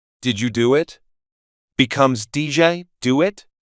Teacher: in standard English it's pronounced as separate words did you but in the American accent they link together as DJ did you do it becomes DJ do it there's no pause